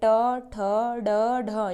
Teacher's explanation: बात करते हैं ट वर्ग की, तो ट वर्ग मूर्धा से, इनका उच्चारण स्थान है मूर्धा, तो यह मूर्धा से बोली जाती है